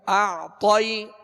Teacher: اور غنہ کر کے پھر اس کو کھینچیں گے، کھینچنے کے بعد اعطی، تو عین جو ہے اس پر جزم ہے، عین ساکن ہے، لہذا اس کا سکون کامل ادا کریں گے۔ اعطی، طا کو پر پڑھیں گے اس لیے کہ حروف مستعلیہ میں سے ہے